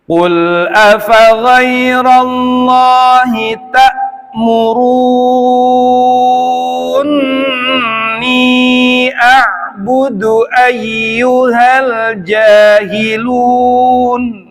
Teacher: Qul pakai qaf yang di pangkal lidah tebal tanpa ada pelepasan udara karena dia jahar dan isti'la.